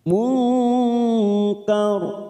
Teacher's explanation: nun sukun bertemu Kaf ikhfa Hakiki kita samarkan tiga ketuk